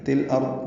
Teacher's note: تل ارض میں لام ساکن پہ اظہار قمری ہے، را ضاد دونوں پر ہیں۔